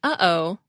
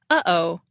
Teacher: flow of air and then suddenly open if you say uh-oh a glottal stop occurs right after the uh and before the Oh try it you'll feel a tightness in your throat when you